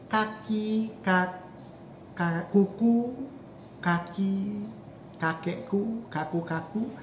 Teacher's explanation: you feel that the back part of your tongue is touching the back part of the ceiling